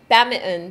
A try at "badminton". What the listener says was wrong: Badminton. Okay, I don't say it like that. Badminton. You're silencing the I and the T.